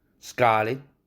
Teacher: 근데 같은 아 사운드가 carnation 할 때 아보다 scarlet의 아가 더 길어진다는 사실이죠